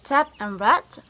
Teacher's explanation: Next is T. T is voiceless because there is no vibration. · Oral passage is blocked by pressing the tongue tip against the alveolar ridge, so this is alveolar.